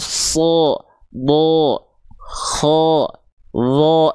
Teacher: Kalau ketika huruf berharokat fathah keluar seperti bunyi vokal O, maka dia termasuk ke dalam huruf yang tebal.